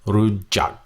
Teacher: It's a hybrid sound between the G and the K, and it's a hard stop.